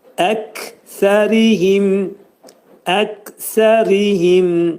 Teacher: Ri incə oxunacaq, tərqiq oxunacaq. Çünki ra hərfindən sonra i gəlib. Him dedikdə mim hərfi izhar olacaq.